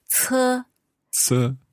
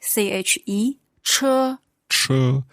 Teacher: You get the tones all right, but the 车, the CHE, so when you have H, you have to roll back your tongue in the mouth and then push your lips forward a bit